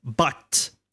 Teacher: But has to be neutral. The shape is not really flat, not really rounded. It's neutral way.